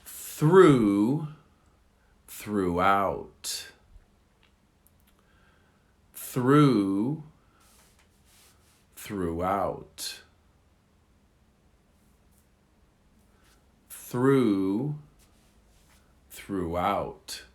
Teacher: So the accent on the second one is on the second syllable, not the first.